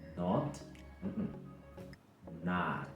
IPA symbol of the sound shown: ɑː